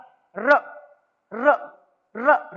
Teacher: हमारी जो जीभ है वो दांतों के जो जड़ें होती हैं मसूड़ों को टच कर रही हैं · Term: वत्स्य व्यंजन